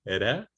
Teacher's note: The flap tap is alveolar